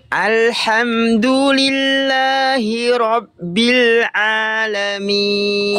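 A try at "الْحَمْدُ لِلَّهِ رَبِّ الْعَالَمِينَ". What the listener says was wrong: Kuatkan sedikit lagi ainnya. Dari tengah tenggorokan. Dari sini.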